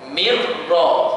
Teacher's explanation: nun mati ataupun nun sukun dimasukkan terus dalam huruf ra. Mirra, bukan min ra. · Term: idgham bila gunnah